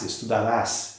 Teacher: A sílaba tônica está lá no ras, estudarás, e o radical é estud.